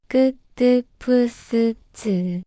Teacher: They're like their regular partners ku, tu, pu, su, chu, but pronounced with a little more tension and strength. Think of them as the bold version of the sound. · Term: tense consonants